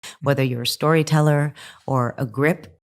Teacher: Here she starts listing occupations, and that's why her intonation goes up a little after each profession